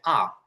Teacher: এটাকে আর বলা যায়, আর ব্রিটিশরা এই আর এর ক্ষেত্রে রটা উচ্চারণ করে না, ওরা বলে আ।